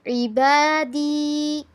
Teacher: یا کے پیچھے زیر آئی، حروف مدہ آگے، اس کو تھوڑا سا کھینچیں گے · انی پہ بھی گنہ کرنا ہے، فانی پہ بھی گنہ کرنا ہے